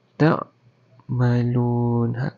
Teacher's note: Qalqalah dekat ain. Ain bukan huruf qalqalah